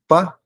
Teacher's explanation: quando você fala pá, os seus lábios se tocam. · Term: labiais